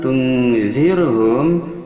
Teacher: zir ini adalah tarakik, dikarenakan ra mati yang sebelumnya kasrah